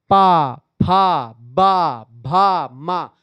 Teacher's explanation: दोनों ओठ आपस में चिपक रहे हैं ना